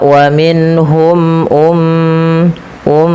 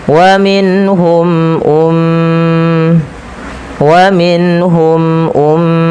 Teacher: tahan suara m ya karena ia mim berharakat tasydid dan kita hukumi dengan bacaan gunah